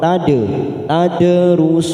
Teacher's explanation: ada huruf Dal sukun kita pantulkan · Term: Qalqalah sugr